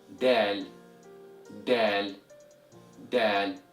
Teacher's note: pressing the tip of your tongue against your front mouth, right behind your front teeth, then breathe out as you pronounce this letter